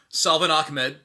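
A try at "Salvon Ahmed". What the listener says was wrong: No, you got the Ahmed part right. It's Savon. No L. Savon Ahmed.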